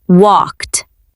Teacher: The ed at the end sounds like a quick t sound.